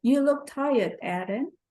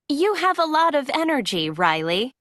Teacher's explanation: there is usually falling intonation and a pause before the name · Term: intonation with direct address